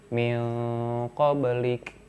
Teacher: Gimana cara menyamarkannya? Si nunnya itu seperti mau diucapkan tapi tidak jadi, malah langsung ke huruf ko. Min qablik, tapi tidak sampai nutup ke eng ya.